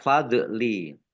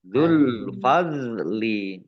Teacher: Dok sukun bukan kolkolah. Ya, bukan kolkolah, jangan dipantulkan. Jangan dibaca fadli.